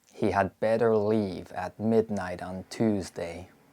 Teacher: There's no light L and no H dropping in American English, but there is yod dropping, which means the y sound is omitted when it appears after alveolar consonants. The t and d sounds are realized as voice taps between vowels when followed by an unstressed syllable, and the t sound is also frequently glottalized.